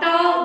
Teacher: ट बोलते हो तो आपकी जो जीभ है वो थोड़ा सा मुड़कर आपकी मूर्धा मसूड़े उसको स्पर्श कर रही है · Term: ट वर्ग